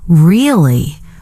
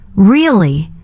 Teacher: if I say, Really? with a flat tone, it can mean disbelief or even sarcasm